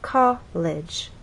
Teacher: with college two syllables our voice sort of steps down college from one level to the next from a higher level